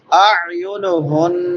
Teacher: عین اور حمزہ میں فرق کرنا ہے، پہلے حمزہ ہے بعد میں عین ہے